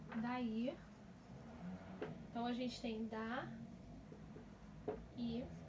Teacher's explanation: Mas aqui, no I, tanto no I como no A, as vogais estão separadas. Então, nós temos aí um hiato